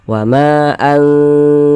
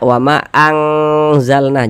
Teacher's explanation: Jangan dibaca wa ma anzalna, jangan, tapi anzalna kita dengungkan, jadi suaranya itu kita tahan, kita panjangkan sejenak sepanjang 2 harokat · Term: ikhfa hakiki